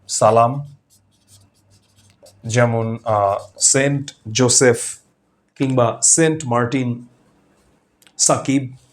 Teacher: প্রকৃত উচ্চারণটা হচ্ছে হিসিং সাউন্ড। যেটা সাপের মত এই সাউন্ডটা।